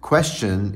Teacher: troche that is the question question is a troche because it's two syllables where the stress is on the first syllable so if i was